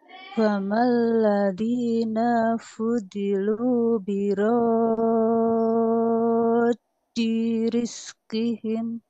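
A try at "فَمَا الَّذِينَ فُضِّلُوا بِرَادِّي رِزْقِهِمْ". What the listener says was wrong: Nah, catatannya di sini Ibu di huruf non, di sini jangan dibaca panjang ya karena tidak tanda panjang. Tadi secara tidak sengaja mungkin naknya kebaca panjang, Bu ya.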